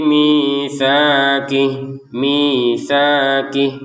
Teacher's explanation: mi dua harakat. Sa dua harakat, ki tidak panjang sama sekali. Jadi dibaca panjang ini karena ada harakat kasrah kemudian ada ya, ada harakat fathah kemudian ada alif ya misaki seperti itu.